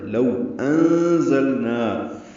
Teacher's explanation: لو کو ہونٹوں کی نا تمام گلائی سے ادا کرنا ہے، ہونٹ آگے لانے · نون ساکن کے بعد زانی کی وجہ سے اخفا ہے، نون کی آواز چھپائیں گے